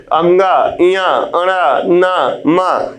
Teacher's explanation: प्रत्येक वर्ग का जो पंचम वर्ण है, पंचम अक्षर है, अंगा इया अणा ना मा, ये नासिक ध्वनियां हैं। इनका उच्चारण नाक से होता है